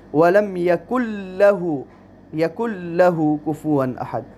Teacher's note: یکن لہ، دیکھیں نون ساکنہ ہے، نون ساکنہ کے بعد حرف لام آیا ہے تو یہاں ادغام بغیر غنہ کا ہوگا، ہم نون اور لام دونوں کو ملا کر ایک حرف لام بنائیں گے اور یوں پڑھیں گے وَلَمْ يَكُنْ لَهُ كُفُوًا أَحَدٌ، اور کفوا احد میں اظہار کا حکم ہے، تنوین ہے اور تنوین کے بعد حروف حلقی میں سے حمزہ آیا ہے۔